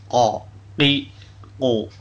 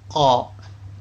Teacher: Makhraj huruf qaf adalah pangkal lidah mengenai langit-langit yang di atasnya.